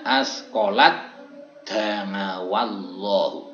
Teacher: taknya dimasukkan dan tidak terbaca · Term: idgham